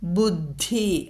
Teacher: ധ രണ്ടക്ഷരങ്ങൾ, കൂട്ടക്ഷരങ്ങളാണത്. താവർഗത്തിലെ മൃദുവും ഘോഷവും